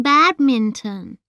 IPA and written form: ˈbædmɪntən (badminton)